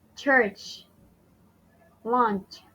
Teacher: it's a combination of the T and Sh it is an un voiced sound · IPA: /tʃ/